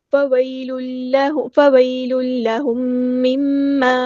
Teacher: نہیں میم ساکن پہ اظہار شفوی نہیں ہو رہا، للہم مما، میم ساکن کے بعد میم ہے تو ادغام شفوی ہو رہا ہے